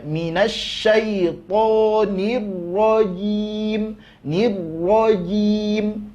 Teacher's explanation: Kemudian jimnya makhraj huruf ja adalah wastul lisan, tengah lidah nempel ke wastu hanakil a'la, nempel ke tengah-tengah langit-langit atas. Kesalahan kebahagiaan dari kita, sebagian dari kita biasanya torful lisannya yang nempel, ujung lidahnya yang nempel, maka nanti jim ke huruf ja ke huruf C perginya.